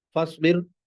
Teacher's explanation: रा साकिन से पहले जेर है लिहाजा रा बारीक है